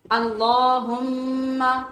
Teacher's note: اللہ ایک تو لام پور ہے، دوسرے کھڑی زبر کی وجہ سے لمبا ہے، تیسرے میم کے اوپر شد ہونے کی وجہ سے ہم غنہ کریں گے۔